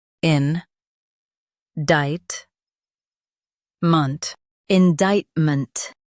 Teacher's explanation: Stress dict and keep ment light.